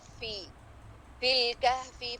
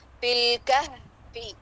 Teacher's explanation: فی لام پہ بغیر قلقلہ کے، لام اظہار قمری